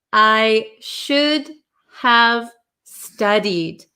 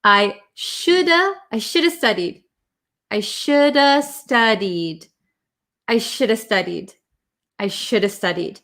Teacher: Americans talk super duper fast, and we usually cut this have out, right? So it's gonna sound, I just said gonna, it's gonna sound like I shoulda studied.